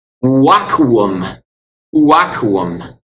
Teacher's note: V is the neat thing. It's a W sound.